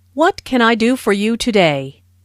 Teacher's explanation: Notice that this question starts with what, so the intonation drops at the end of the question.